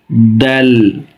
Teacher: উচ্চারণের স্থান জিহ্বার মাথা এবং সামনে উপরে দাঁতের গোড়ার সঙ্গে লাগিয়ে দেল। একদম বেশি শক্ত হরফ না।